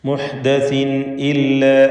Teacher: തൻവീനിനെ ഇൽഹാർ ഹൽഖി നൽകി മണിക്കാതെ വെളിവാക്കണം. ഹംസയുടെ മുമ്പിൽ തൻവീൻ വന്നു.